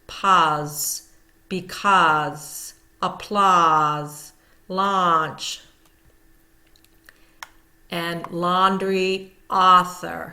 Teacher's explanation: So we're hearing that ah as if you're at the doctor's office and having to stick out your tongue.